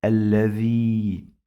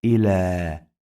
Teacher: We pronounce this ya like long vowel alif, not ya.